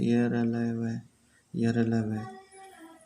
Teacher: अंतस्थ व्यंजन, इन व्यंजनों का उच्चारण मुख के आंतरिक भागों से होता है, यानी इनके उच्चारण में जीभ, दांत और ओष्ठ एक दूसरे को स्पर्श नहीं करते